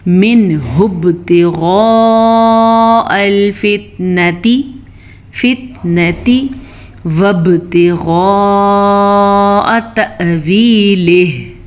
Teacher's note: ہم نے غین کو پر پڑھا، با پہ کلکلا کیا، مد کو 5 حرکات عربیہ کے برابر لمبا کیا۔